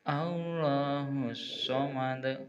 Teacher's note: Jadi tasdid, so-nya ada asofirnya, sifatnya asofir, ada desisnya